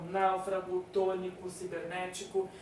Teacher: Então, náufrago, tônico, cibernético, as palavras ali proparoxítonas, elas recebem o acento porque o acento vai sempre na antepenúltima sílaba